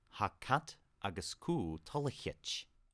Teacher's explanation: In East Perthshire Gaelic, this would probably be Hakat agus ku Tolichich. So no pre-aspiration or h sound with cat. As is often the case, the final vowel of Tolichtje is dropped.